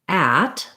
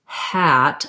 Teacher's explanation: That starts with my throat tight, at, kind of a glottal feeling there, versus hat. I have to let my throat be open for that sound to come out.